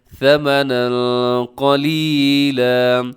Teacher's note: اخفاء ہو رہا ہے. تنوین کے بعد قاف ہے